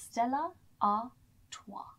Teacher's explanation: especially with the French language, the S on the end is silent